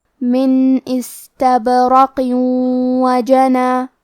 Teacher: اور اگر ہم یہ کلمہ کو پوری آیت کے ساتھ ملا کے پڑھے تو کیونکہ قاف کے نیچے تنوین زیر ہے، پھر حرف الواو ہے کلمت وجنا، واو حروف الادغام بغنہ میں سے ہے اور ادغام کا معنی ہے حرف کو حرف میں داخل کرنا، تو ہم یہ تنوین کو واو میں ملا کے غنہ اور تشدید کے ساتھ یہ حکم کو ادا کریں گے